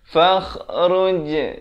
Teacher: Dia kena pepeskan pada huruf jim.